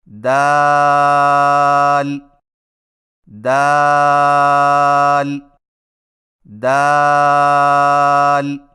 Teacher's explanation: دال کی ادائیگی میں زبان کی نوک کو ثنایا علیہ کی جڑ سے لگا کر باریک آواز میں پڑھیں